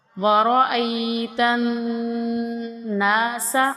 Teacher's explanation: را کو موٹا کریں گے، حمزہ کو کھینچیں گے